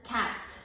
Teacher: В думата cat казваме, отваряме уста да кажем А, но казваме Е. Така. Наподобява този символ и тези два звука, наподобяват всъщност българското Ъ.